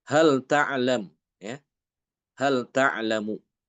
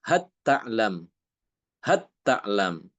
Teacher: Imam Hisyam juga mengidgamkan lam ini ke dalam dua huruf yaitu huruf ta dengan huruf tasa · Lamnya hilang masuk ke dalam huruf ta. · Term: idgham